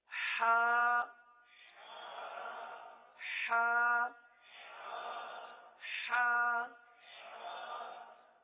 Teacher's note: اب اس حرف کا مخرج کیا ہے؟ حلق کا درمیان، وسط حلق